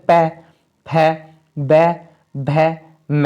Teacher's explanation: उसके बाद ओष्ठ वाले आते हैं, इन्हें बोलने में हमारे होठ मिलते हैं आपस में, जैसे प, फ, ब, भ, म, इन्हें बोलने में हमारे जो है होठ आपस में मिल रहे हैं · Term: ओष्ठ व्यंजन